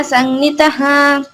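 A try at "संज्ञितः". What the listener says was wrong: సంజిత, I mean అది జీ కదా, నీ అంటున్నావు. అది నీ కాదురా, జీ, ఐ మీన్ నీ ఉంది కదా, సంజిత.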